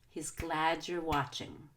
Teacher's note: you only need to stress glad and watch